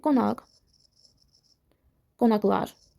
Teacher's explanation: Milli və çox hecalı sözlərdə. özündən sonra sait gəlməsə x səsini ifadə eləyir